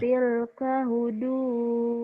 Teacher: Tapi Allahnya panjang ini ya, O-nya double nih.